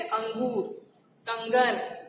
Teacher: अनुस्वार का उच्चारण उसके बाद के व्यंजन की नासिकीय ध्वनि की तरह होता है